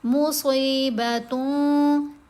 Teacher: تن میں جو نون ہے اس کو ہم ناک میں چھپا کر پڑھتے ہیں اور ایک الف کی مقدار جتنا ٹھہر کر پڑھتے ہیں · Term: احفا